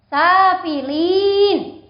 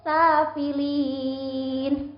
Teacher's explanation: Ini ada bacaan mat arid li sukun. Mat arid li sukun ini mat tobi'i yang dibaca waqaf, boleh dibaca panjangnya 1 alif boleh, 2 alif boleh, 3 alif boleh. Jadi boleh lebih panjang dari safilin.